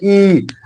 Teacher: ई का उच्चारण स्थान जो है वो तालू होगा